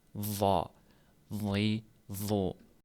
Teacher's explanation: Bunda sa va zal harflarida tilni orqa qismi ko'tarilmaydi. Zo harfida esa tilni orqa qismi ko'tariladi.